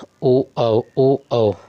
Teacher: ओ औ कंठोष्ठ होते हैं